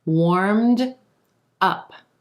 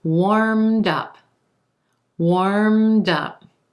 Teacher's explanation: That D links over in front of up and becomes warmed up.